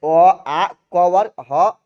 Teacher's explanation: कंठ और निचली जीभ के स्पर्श से बोले जाने वाले वर्ण